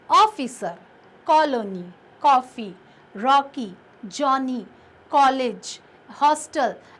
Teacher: इसका उच्चारण ना तो आ की तरह होता है ना ओ की तरह होता है, ये इन दोनों के बीच की स्थिति है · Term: अर्धचंद्र